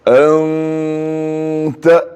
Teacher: انتا نہیں بولنا, نون کے مخرج کو زبان نہیں لگانا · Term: اخفا